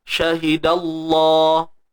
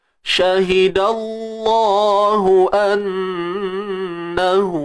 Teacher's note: Kalimah Allah ni kena tebal sebab sebelumnya terdapat huruf yang berbaris atas. Ni pada dal ni.